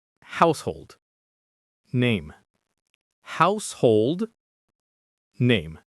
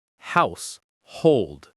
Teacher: The stress in the first word is on the first syllable.